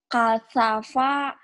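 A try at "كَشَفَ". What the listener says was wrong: Shin. Belum keluar dia shinnya. Kasyafa. Sya. Kasyafa. Lidahnya lebar, bukan lebar. Kayak orang gosok gigi.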